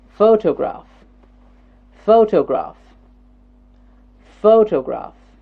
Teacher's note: the first syllable is getting stressed